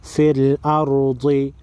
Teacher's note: را پر جزم ہے را سے پہلے والے حرف پر زبر ہے را کو بھی موٹا پڑھیں گے · ضاد حروف مستعلیہ میں سے ہے ضاد کو موٹا پڑھیں گے